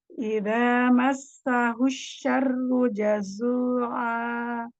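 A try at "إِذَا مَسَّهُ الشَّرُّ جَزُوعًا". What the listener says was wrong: Roknya tebalkan lagi, dikit lagi tebalkan. Ru. Getarkan tengah ujung lidahnya digetarkan. Ru. Sempurnakan Dhamma. Jim, syiddah. Dapatkan jazu'a.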